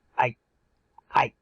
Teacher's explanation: You always sort of swallow the I at the end of the ah.